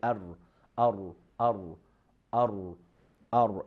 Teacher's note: tip of the tongue touching the hard palate near the gums of the front two teeth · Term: letter raw